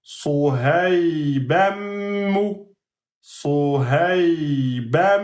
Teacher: Sohaybanmu va devenir Sohayba, et vous allez faire 2 temps sur le mim. On a mis une shadda sur le mim.